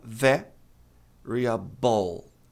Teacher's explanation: Então, a pronúncia correta é variable. A tônica tá na primeira sílaba. Ver variable e não variable.